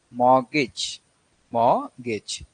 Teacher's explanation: So T is the word is not pronounced; it is silent. The stress is on first syllable